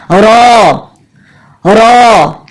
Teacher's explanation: रॉ के लिए अमूमन हम जैसे अपनी जबान में आदी होते हैं, जबान को हम ऊपर उठा लेते हैं, अंदर तालू की तरफ लगा देते हैं। तो ऊपर तालू पे नहीं लगाना, बल्कि जबान की नोक को सामने वाले 2 दांतों के मसूड़े पे रख के रॉ को अदा करना है। रॉ रॉ اس طرح کہ زبان کی نوک مسوڑے کو بالکل بند نہ کر دے بلکہ زبان کی نوک مسوڑے پہ لگے.